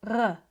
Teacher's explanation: the R sound comes from the back of the throat, and the tongue is somewhere near the bottom or middle of the mouth. It's more of a r sound.